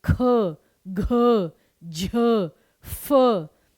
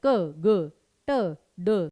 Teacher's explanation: जिन्हें बोलने में पूरी जान लग रही है वह आपके महाप्राण और जो आसानी से बोले जा रहे हैं वह आपके अल्पप्राण · बोलने में ज्यादा जान लगे तो महाप्राण, बोलने में कम जान लगे तो अल्प प्राण